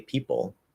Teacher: we're going from the second P in people straight into that half L vowel sound, the dark L